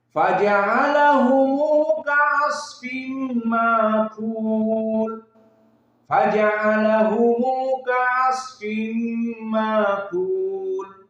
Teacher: Maka di sini Abu Ja'far sama membaca dengan silatul mim dan membaca juga dengan hudifa hamzah bil mad ditambah menjadi alif, sehingga di sini menjadi mad tabi'i